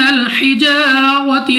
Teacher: الف سے پہلے زبر الف مدہ 2 سیکنڈ تک کھینچ کر لمبا کر کے پڑھنا ہے۔ را پر زبر، را کو پر یعنی موٹا پڑھیں گے۔ اس کے بعد پھر ہمارے پاس الف سے پہلے زبر الف مدہ 2 سیکنڈ تک کھینچ کر پڑھا جائے گا۔